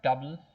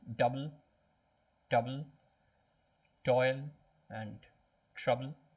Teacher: How do you pronounce double? Double, you stress the first syllable. Double, toil and trouble, same as double, trouble.